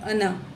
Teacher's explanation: اس کو انا پڑھیں گے، الف کے ساتھ نہیں پڑھیں گے، جو ہے چھوٹا کر کے پڑھیں گے